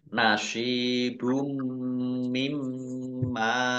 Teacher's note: Dumah tanwin bertemu dengan huruf mim idgham bi gunnah dibaca mendengung, masuk dengan mendengung, yaitu mendengung mim, ditandai mimnya ada tasdidnya.